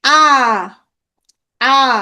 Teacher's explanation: জিভটা হচ্ছে নিচের দিকে চলে গেছে, তার মানে নিম্ন স্বরধ্বনি হচ্ছে আ।